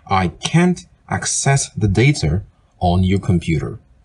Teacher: The verb form access has the stress in the second syllable.